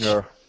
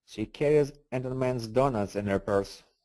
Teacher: if we say it fast, just cancel the H.